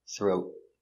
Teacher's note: You make a stop T. Throat. The tongue goes up and stop. Throat. Throat.